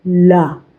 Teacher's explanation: ला बोलने में जीभ दांतों से छूती है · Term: दंतव्य व्यंजन